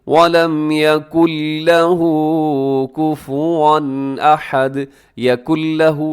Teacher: اس میں نون کی آواز ختم ہو جائے گی کیونکہ یہاں ادغام بغیر غننے کے ہو رہا ہے